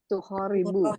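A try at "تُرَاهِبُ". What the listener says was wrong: turah. Sering kebolak-balik hurufnya. Ibu.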